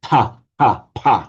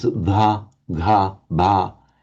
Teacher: although you've got the aspirated p, k, t in Chinese, you do not have the aspirated b, g, the